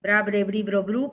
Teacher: O sea la oclusiva más la vibrante forman las sílabas bra bru